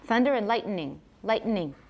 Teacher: That n may come out as an extra syllable